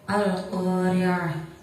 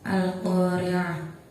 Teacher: Di situ ada ro yang berharokat kasrah, maka cara bacanya tipis. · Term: ro tarkik